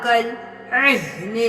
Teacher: عین گلے کے درمیان سے، ہا گلے کے سب سے نچلے حصے سے